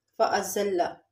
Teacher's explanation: زا اس کے اندر سیٹی کی آواز آنی چاہیے۔ اور لام کے اوپر تشدید ہے تو اس کو ایک دفعہ زا کے ساتھ ملا کے پڑھیں گے اور ایک دفعہ اس کی اپنی حرکت کے ساتھ۔ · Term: سٹی والے حروف